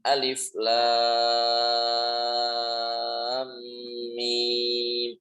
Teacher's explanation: Alifnya nggak ada panjang sama sekali.